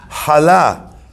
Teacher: A chet in Sephardi, right, in pronunciation comes from the throat.